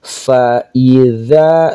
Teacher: za di ujung lidah